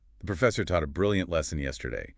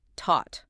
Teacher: The past tense of teach, taught, starts with a hard aspirated T